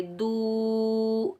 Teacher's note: دال کے اوپر پیش، آگے واو ساکن ہے، دال کو ہم واو ساکن کے ساتھ ملائیں گے، یہ واو مدہ ہے، اس کو بھی ہم ایک الف کی مقدار کھینچ کر ادا کریں گے